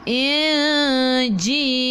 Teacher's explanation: Nun tak ada sukun kena dengung ikhfa hakiki. Dengung 2 harakat bawa ke sisi huruf jim. Inji. Ji 2 harakat ada ya.